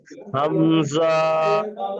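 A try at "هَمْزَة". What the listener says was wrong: হামজা টান হয়ে যাচ্ছে, হামজা। আও, আও, আও, আও। হাউ নয়, আও, আও,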